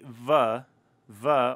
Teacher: hold it out you can feel your vocal cords vibrating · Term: voicing